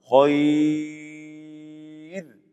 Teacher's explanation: را ساکن ہے، اس سے پہلے یا ساکن آ گئی. حالت وقف میں را کو باریک پڑھیں گے